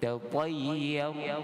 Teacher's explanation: Tatayyar, bacaan Ya dengan fathah dan ra dibaca sukun dengan tebal.